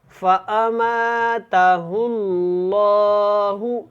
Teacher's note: اللہ والا لام سے پہلے پیش ہے تو اس کو ہم نے کیا کرنا ہے، موٹا پڑھنا ہے